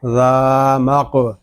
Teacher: ذال الف زبر ذا، یتیما ذا، میم قاف زبر مق، قاف یہ حروف مستعلیہ میں سے ہے، اس کو پر پڑھیں گے. یہ قاف ساکن ہے، اس میں قلقلہ خوب ظاہر کریں گے